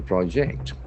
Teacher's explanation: So here the noun pronunciation will have accent on the first syllable, whereas if it is a verb, project, the accent shifts towards the second syllable